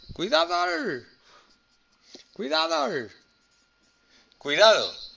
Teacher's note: También un diptongo y tiene dos cerradas.